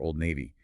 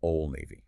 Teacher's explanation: The D in old often disappears before the N.